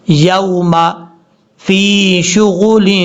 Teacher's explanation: یوم فی شغل، فا کو یا سے ملائیں گے، لمبا کریں گے 1 الف کی مقدار کیونکہ یہ یا مدہ ہے